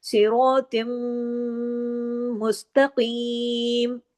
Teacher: صرف اس میں صاد، را، تو، یہ جو اور قاف، یہ 4 حروف یہاں موٹے پڑھے جائیں گے، باقی تمام باریک پڑھے جائیں گے. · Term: موٹے حروف